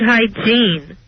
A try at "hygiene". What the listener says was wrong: And not hygiene, it's hygiene. That's the accent on the wrong syllable.